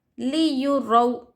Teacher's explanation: واو ساکن سے پہلے اگر حرکت زبر رہا تو واولین ہوگا، واولین کو ہم جلدی پڑھیں گے، ذرا بھی نہیں کھینچیں گے